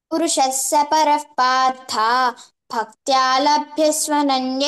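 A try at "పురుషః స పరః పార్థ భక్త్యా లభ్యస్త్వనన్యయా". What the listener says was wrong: భక్త్యాలభ్య త్వనన్య స్వ స్వ అంటున్నావు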